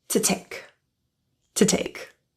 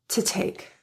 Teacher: the te's in to and take they have true aspirated te's they're at the beginning of kind of like the one syllable